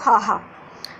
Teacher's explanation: ਇਕੱਲਾ ਹਾਹਾ ਕੀ ਹੈ, ਸੁਰਯੰਤਰੀ ਹੈ। ਤੇ ਹਾਹਾ ਜਦੋਂ ਬੋਲਦੇ ਆ ਆਪਣੀ ਜਿਹੜੀ ਸਾਰੀ ਹਵਾ ਉਹ ਬਿਨਾਂ ਰੁਕੇ ਬੇਰੋਕ ਮੂੰਹ 'ਚੋਂ ਬਾਹਰ ਨਿਕਲਦੀ ਹੈ ਹਾਹਾ ਬੋਲਣ ਸਮੇਂ।